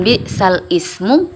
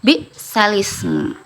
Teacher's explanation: Jadi dipindahkan yang tadinya huruf lam sukun dan hamzah kasroh, jadi dibacanya jadi lam kasroh semuanya, bisalismu, seperti itu. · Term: naql